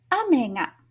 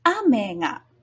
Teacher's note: This is an atamadaka pattern where a is high and me is low. The particle ga is also low.